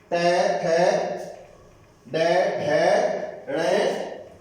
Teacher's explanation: ये मूर्धा वर्ण, मूर्धा से हो रहे हैं ये, और मूर्धा से होने के कारण इनको मूर्धन्य वर्ण कहा जाता है।